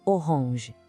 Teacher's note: Tenta sentir o som saindo um pouquinho pelo nariz no final.